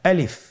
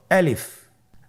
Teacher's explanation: আলিফে কিন্তু কোনো টান নেই, আপনারা বুঝতে পারতেছেন। আমি যখন আলিফ বলছি এর মধ্যে কোনো টান হবে না